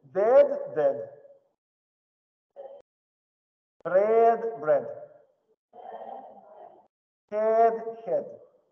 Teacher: Перед «д», «т», «с» «э» останавливается иногда на стадии «э» и не доезжает до самого верха.